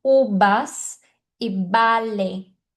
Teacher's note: a letra V muitas pessoas pronunciam como se fosse a letra B de bola. Então existem hispânicos que falam ubas e bale se você falar uvas e vale, tá tudo bem.